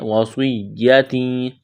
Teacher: سواد کو موٹا کرنا ہے. سیٹی کی آواز پیدا کرنی ہے.